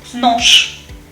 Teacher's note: j, fricative at the end, becomes sh, voiceless